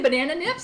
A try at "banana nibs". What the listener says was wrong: Your P's and your B's are pretty close, but don't get excited. It's nibs.